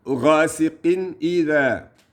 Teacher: There's no combination of sound. There is no muffle or nasalization or adding of any letters there. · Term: idhar